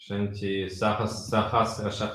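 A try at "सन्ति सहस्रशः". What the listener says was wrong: Not Shanti, Santi.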